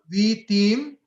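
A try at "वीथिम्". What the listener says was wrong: Vithim. Dirga, it's not dirga, it's haswa. Vithim.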